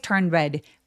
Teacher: 자음 N 소리 그다음에 D 소리 그다음에 R 자음이 이렇게 뭉쳐 있는 경우에 중간에 낀 D나티를 잘 발음하지 않는다고